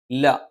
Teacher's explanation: നാവിന്റെ അറ്റം മേലെ മുൻപല്ലിന്റെ മോണയിലാണ്